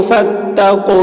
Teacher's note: فا کو تا سے ملا رہے ہیں اور واو یہاں پر نہیں پڑھا جا رہا کیونکہ واو میں کوئی حرکت نہیں ہے